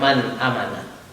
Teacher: ada nun mati bertemu dengan hamzah Jadi jelas tanpa ada keraguan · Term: izhar halqi